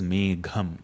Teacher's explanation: The Gha also has to be a Mahaprana sound.